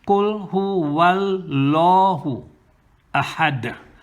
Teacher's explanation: The lam that is mushaddada becomes tafkhim.